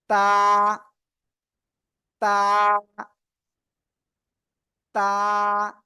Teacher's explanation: তাহলে আমরা এখন বলতে পারি জিহ্বার আগা, এই যে আমার দিকে তাকান, জিহ্বার আগা সামনে উপরে দুই দাঁতের, জিহ্বার আগা সামনের উপরে দুই দাঁতের গুড়ায়